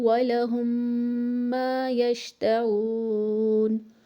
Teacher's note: ناک میں آواز کو روکے رکھیں گے، اور یہ روکنے کی مقدار 2 سے 3 سیکنڈ تک ہوگی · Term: غنہ